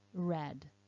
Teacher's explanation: the second sound with the r the one on the right i'm making that sound by curling my tongue backwards inside the mouth so the tip of the tongue curls up and back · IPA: /r/